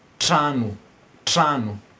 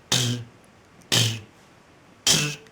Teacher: this tr is the voiceless part, and there is its counterpart which is voiced, which is the dr.